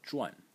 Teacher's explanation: the second pronunciation for this character is zhuan. In the fourth tone